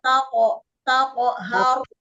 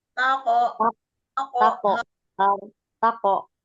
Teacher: Pantulkan ke huruf O karena huruf qof adalah huruf tebal.